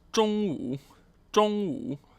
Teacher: first tone, third tone, meaning noon